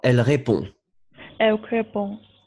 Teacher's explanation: Le D, vous ne prononcez pas